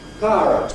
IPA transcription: ˈpaərət